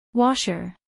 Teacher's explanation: acentuación en la primera sílaba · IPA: ˈwɑʃər